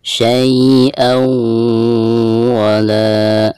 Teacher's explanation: Dan di atas hamzah ada tanwin fathatain lalu berhadapan dengan salah satu huruf idgham ya, di sini huruf waw dan termasuk idgham bigunah ya. Maka cara membaca tanwin tersebut itu harus dimasukkan ke huruf waw disertai dengan gunah. Jadi selain ditasdidkan itu harus ada gunah ya, jadi ditahan dulu.